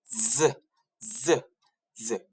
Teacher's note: Huruf Z cara sebutannya iaitu geseran dan berada di gigi gusi.